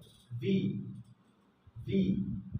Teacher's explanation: আমার উপরের দাঁত নিচের ঠোঁটের ভিতরের দিকে টাচ করবে, হালকা বাতাসটা বের হয়ে যাবে। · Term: ইংলিশের যে ভি